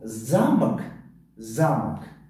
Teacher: ударение дар ҳарфи а аст ва ҳарфи а баланд талаффуз шуда истодааст, ҳарфи о умуман талаффуз нашудааст. Талаффуз шуда истодааст, лекин бениҳоят паст.